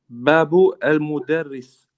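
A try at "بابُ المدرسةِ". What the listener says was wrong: Okay, now we can see there's a term on the end. So it's al-madrasati, it's the school.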